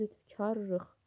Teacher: Səslənmə zamanı isə l r-ya çevrilir.